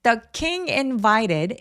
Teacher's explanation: invited 강세 두 번째에 오고요. invited 할 때 t가 뭔가 굴러가는 소리가 나죠.